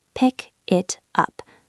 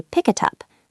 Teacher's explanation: It sounds like a 3-syllable word instead of 3 separate words.